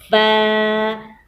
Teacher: اوپر والے 2 دانتوں کو نیچے والے ہونٹ کے اندرونی حصے سے ملائیں گے